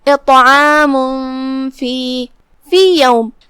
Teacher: یہاں حکم ہے اخفاء، کیونکہ فا حروف الاخفاء میں سے ہے، جو کہ تنوین کی اصلیت اور اس کی ادائیگی نون ساکن ہوتی ہے، تو ہم تنوین کو چھپاتے ہوئے یعنی بغیر ظاہر کیے ہوئے غنہ کے ساتھ یہ حکم کو ادا کریں گے · پھر حرف الطا ہے، پا پہ جزم ہے، تو یہاں طا کا 2 حکم ہے. طا حروف التفخیم میں سے ہے اور جو کہ اس پہ جزم ہے، لہذا یہاں طا حروف القلقلہ میں سے بھی ہوا، تو ہم طا کو بھاری آواز میں اور اسے ہلاتے ہوئے یہ کلمہ کو ادا کریں گے